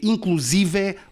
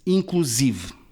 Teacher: inclusive não é uma palavra aguda é uma palavra grave cujo acento recai na sílaba se não se lê Inclusive lê-se